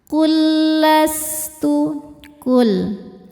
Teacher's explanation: lam yang sukun dimasukkan ke lam kedua tanpa ditahan ya, enggak ada dengungnya. Dua huruf yang sama makhrajnya dan sama sifatnya bertemu ya.